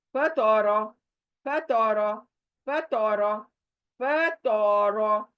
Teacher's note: फ बारीक, तो मोटा, रो मोटा